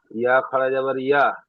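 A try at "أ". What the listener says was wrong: ইয়া নয়, হামজা, খাড়া যাবার একালি টান দিয়ে পড়বেন। খাড়া যাবার খাড়া যে একালি টান হয়।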